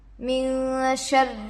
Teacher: رو پر تشدید ہے، رائے مشددہ ہوگا. رائے مشددہ پر زیر ہے، باریک پڑھیں گے. · نون پر جزم ہے، نون ساکن ہوگا. نون ساکن کے بعد حروف اخفا سے شین آ کر ہے، اس لیے نون کی آواز کو ناک میں چھپا کر پڑھنا چاہیے. اخفا کی مقدار 1 الف کے برابر ہوتا ہے.